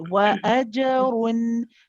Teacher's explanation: وَأَجْرٌ. Just making sure that the qalqala is nice and clear before you move on to the ra